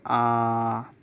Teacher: आ तो बड़ा आ है मतलब पूरा मुह खुल जाएगा